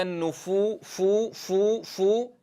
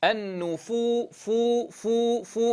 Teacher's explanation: هنا ملاحظتان: الأولى الحذر من نفخ الخدين في الفاء، فلا أقول وإذا النفو فو فو فو، وإنما أعتمد على طرف الثنايا العليا مع بطن الشفة السفلى لتحقيق مخرج الفاء. النفو فو فو فو من غير نفخ للخدين، ولا أقول فو فو فو، فهذا يضعف الاتكاء على مخرج الحرف، يضعف صوت الحرف، فلا بد من التصويت من المخرج.